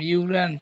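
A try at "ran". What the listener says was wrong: র্যান্ট লাস্টে টি নেই ভাই, দেখেন টি আছে, আপনি র্যান্ট বলছেন।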